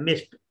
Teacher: है मिस्ड call नहीं होता मिस्ड कॉल होता है मिस्ड यानी डी जो है ट की आवाज देता है